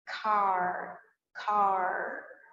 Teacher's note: que a gente tem por exemplo no final de car car em alguns interiores a gente usa bastante esse R bem puxado em algumas outras regiões do Brasil também